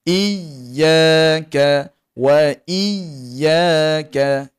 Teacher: Dan angkat nada suara tadi. Pastikan huruf ya tadi tidak sampai putus suara, tidak sampai tertahan suara. Kerana sifat bagi huruf ya ini mengalir suara. Ha jadi kita angkat nada suara tapi tidak jadi sampai putus.